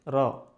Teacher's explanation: র টা আমরা একটা কম্পন তৈরি করব। র বলার ক্ষেত্রে।